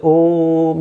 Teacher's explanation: ओ जो है वो प्लुत है, उसको देर तक खींचना है, ठीक है। खींचने का मतलब है उसमें तीन मात्राएं हैं, ठीक है।